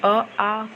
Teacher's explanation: स्वरों का उच्चारण स्थान अ, आ कंठ से बोले जाते हैं